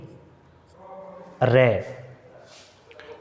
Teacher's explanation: अब प्रकंपित या लुंठित व्यंजन कौन सा है कि प्रकंपित यानी कंपन, यानी जीवा जो होती है वो प्रकंपित वर्ण का उच्चारण करते समय उच्चारण स्थान को छूते समय उस पर आघात करती है, जिससे मुख यानी कंपन पैदा होता है, वो प्रकंपित या लुंठित व्यंजन कहलाते हैं।